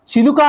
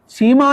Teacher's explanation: ఇ తో కూడుకున్నప్పుడేమో తాలవ్యం అవుతుంది